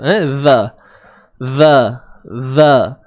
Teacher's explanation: Huruf zal keluarkan hujung lidah. Sikit di antara 2 gigi, gigi atas dan gigi bawah.